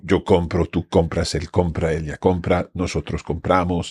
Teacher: the accent is happening on the second last syllable